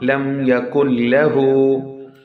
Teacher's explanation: Merging the voice. Noon voice almost would be lost and it would be merged into the next letter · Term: Idgham